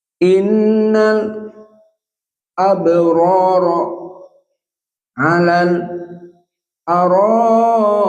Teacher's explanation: Mad wajib muttasil. So we read 6 harokat.